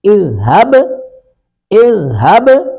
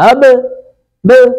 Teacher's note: با ساکن پہ قلقلہ ہو رہا ہے ، ہب، ب، یہ با کی آواز لوٹ کے آ رہی